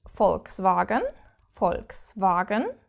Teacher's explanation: you have to pronounce this V like an F